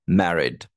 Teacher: stress is on the first syllable